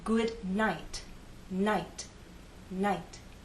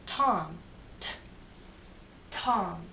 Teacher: there is a puff of air but it's very weak it's not as strong as the puff of air at the beginning of the word